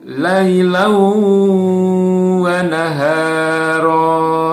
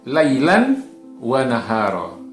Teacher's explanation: Lailan wa nahara, ya. Tapi di sini lailannya yang bertanwin ini dia masuk ke dalam huruf wawu. Jadi menjadi lailau wa nahara. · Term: idgham bigunah